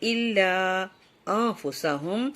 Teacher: الا میں یہ ہماری درمیانی مد آ رہی ہے جو 3 سے 4 انگلی برابر کھنچتی ہے